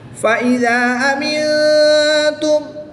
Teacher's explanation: نون ساکن کے بعد تا حرف اخفا میں سے ہے تو یہاں پر بھی اخفا ہوگا، یعنی غنہ زمانی کر کے پڑھیں گے۔